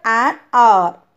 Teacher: That is a, even though the word R, it begins with a consonant, but the consonant has the sound of a vowel. The first letter H in the word is silent, and the first sound we hear is that of O. Since O is a vowel, we use an before the word R.